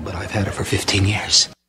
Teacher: this V actually runs into the H and it almost sounds like an F